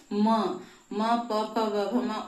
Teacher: म ओष्ठ है और म नासिका से भी उच्चारित होगा। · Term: नासिक्य वर्ण